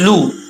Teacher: लाम पेश लू, इसको लो नहीं पढ़ना, लू।